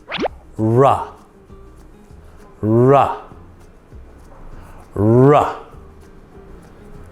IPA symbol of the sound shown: r